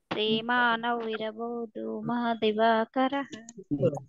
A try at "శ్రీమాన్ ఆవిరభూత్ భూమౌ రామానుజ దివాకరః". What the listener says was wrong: మీరు ఎడగొట్టి దాని అర్థం మార్చొద్దు. ఆవిరభూత్ భూమౌ కలిపి చేస్తే శ్రీమాన్ ఆవిరభూత్ భూమౌ, విడదీస్తే శ్రీమాన్ ఆవిరభూత్ భూమౌ అలా చదవాలి.